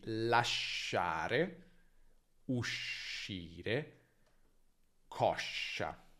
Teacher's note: Ecco, la I qui non si pronuncia, serve solo a indicare che dobbiamo dire sh e non pronunciare sk, quindi sciarpa è diverso da scarpa. Sh, come abbiamo già visto per gn, tra vocali è sempre lungo, almeno in italiano standard di nuovo.